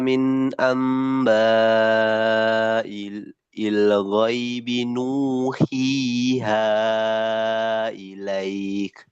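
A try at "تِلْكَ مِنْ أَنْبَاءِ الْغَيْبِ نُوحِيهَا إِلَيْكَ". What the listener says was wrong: Nah, coba lagi. Jangan ada yang keputus. Satu nafas.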